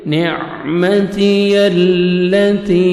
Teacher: یا مدہ کے بعد نیکسٹ کلمہ کی سٹارٹنگ میں حمزہ آ رہا ہے، 3 سے 4 سیکنڈ آپ نے ایکسٹرا مد کرنی ہے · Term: مد جائز